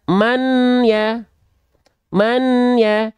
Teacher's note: idom artinya meleb ya atau memasukkan memasukkan apa memasukkan bunyi n memasukkan bunyi n atau meleburkan bunyi n memasukkan ke mana dimasukkan ke huruf yanya jadi bunyi nnya ini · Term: idgham